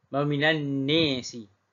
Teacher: dia baca dengan imalah an-nasi iaitu bagi baris bawah sahaja pada kalimah an-nasi.